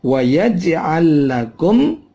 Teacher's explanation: ada lam ketemu lam, lam mati ketemu lam, mislain.